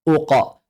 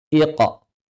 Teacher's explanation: Karena qaf memiliki sifat lazimah yaitu qalqalah yang selalu tafkhim. · Mau sebelumnya fathah, aqa. Sebelumnya dhammah, uqa. Sebelumnya kasrah, iqa. Qaf tetap. Kenapa? Karena sifat lazimah qalqalahnya yang selalu tafkhim.